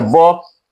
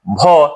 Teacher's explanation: ब और उसमें ह जोड़ेंगे तो निकलेगा भ